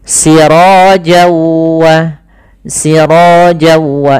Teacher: ketemu waw maka n-nya hilang, masuk ke waw, jadi waw-nya double. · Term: idgham bi gunnah